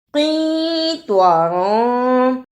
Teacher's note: قینطاراں، اسے قینطاراً نہیں پڑھنا، طوا کی جگہ پر تا کی آواز نہیں آنی چاہیے